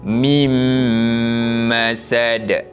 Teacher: Yang mana cara bacaan idgham bi gunnah ini memasukkan bunyi bacaan nun mati kepada huruf selepasnya berserta dengan dengung. Kita tak bunyikan nun mati tu, kita terus masuk pada huruf mim dan dibaca dengan dengung.